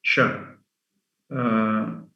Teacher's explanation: Sa with this sign is a sha, which is a voiceless palato-alveolar fricative